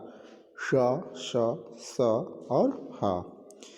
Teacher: ऐसे व्यंजन जिनका उच्चारण करने से वायु रगड़ खाते हुए गर्माहट पैदा करते हुए मुख से बाहर निकलती है, वो ऊष्म व्यंजन होते हैं।